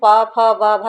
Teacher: भा जो है स्पर्श है, घोष भी है, महाप्राण भी है, ओष्ठ भी है।